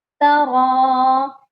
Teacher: را کو موٹا کریں گے